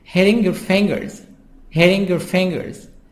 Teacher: T, soft D in American.